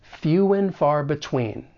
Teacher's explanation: For pronunciation, the first thing that we're going to do is reduce and to just n, which is very common in spoken English, and then we're going to link that final consonant sound in few with that beginning vowel sound, and it's going to sound like fewen.